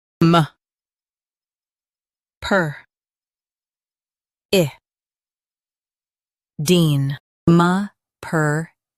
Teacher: Emphasize per and keep I light.